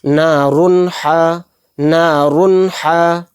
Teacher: تو اس لیے اس کے را 2 پیش رن کا جو نون ہے، رن، جو اینڈ میں نون یعنی کہ این کی وائس آ رہی ہے اس کو ظاہر کر کے کلیئر کر کے پڑھیں گے، یعنی غنہ نہیں کریں گے، بلا غنہ کے جلد پڑھیں گے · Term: اظہار